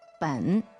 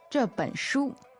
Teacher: B E N, third tone, ben.